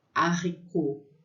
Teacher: A letra H, né, o H, não se pronuncia em francês